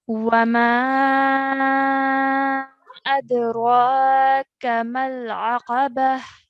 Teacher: the ra needs to be stretched for 2 counts, and the kaf needs to be stretched for 1 count